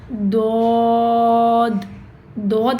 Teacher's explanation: दोद आपके जबान के किनारों से अदा होता है।